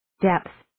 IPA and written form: depθ (Depth)